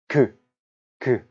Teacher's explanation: 공기가 못 나오도록 막았다가 터트리면서 발음하죠. 입술을 통해서든 혓바닥을 통해서든 공기를 못 나오게 막습니다. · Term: 파열음